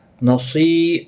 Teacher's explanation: صاد مستعلیہ ہے، پر پڑھا جائے گا، یا مدہ بھی ہے، ایک الف کی مقدار کے برابر کھینچ کر بھی پڑھیں گے، اور حرکت والے حرف کو کھینچنا نہیں۔